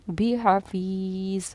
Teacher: یہاں یا ساکنہ سے پہلے زیر ہے تو ہم نے ایک الف کے برابر کھینچ کر اس کو ادا کیا